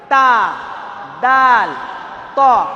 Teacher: হামজা এবং হা কণ্ঠনালীর একদম নিচে থেকে আর তা দাল ত এই তিনটে জিভের আগা এবং উপরের সামনের দুই দাঁতের গোড়া থেকে বের হয়